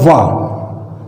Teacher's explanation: वा है जो अल्प प्राण है, सघोष है, किंतु एक बात इसमें अलग है कि ये दंत और ओष्ठ दोनों के सम्मिलित रूप से इनका उच्चारण होता है, यानी ये दंतोष्ठ है।